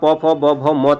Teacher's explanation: इसके अलावा प फ ब भ म तक का जो है इनका होता है होंठ, होंठ यानी कि दोनों होठों का इसमें प्रयोग किया जाता है